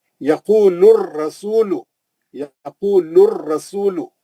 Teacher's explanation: अलिफ लाम गिर गया, लाम के पेश से सीधा रा में चले गए, यक़ूलुर रसूल, ये अलिफ लाम नहीं पढ़ते, शमसी हरफ है रा, रा शमसी हरफ है, उससे पहले का अलिफ लाम नहीं पढ़ते, है ना।